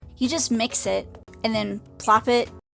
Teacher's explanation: Cet énoncé sera enfin l'occasion de faire observer à notre jeune public que l'anglais présente un phénomène consonantique inconnu en français, le coup de glotte, glottal stop en anglais, qui peut parfois, dans le discours informel, remplacer la dentale T.